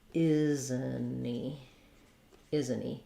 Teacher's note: instead of making a stop T, we will drop the H. So it'll sound more like, isn't he? · we do drop the T entirely and we link it together and we drop the H.